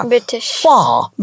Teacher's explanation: যে কোনো ওয়ার্ডের শেষে আর থাকলে উচ্চারণ করে না।